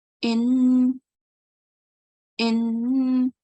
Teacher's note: I will do a stretched nasal sound